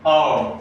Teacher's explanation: जब हम औ का उच्चारण करते हैं तो हमारे मुंह का आकार कैसा हो जाता है गोलाकार या वृत्ताकार हो जाता है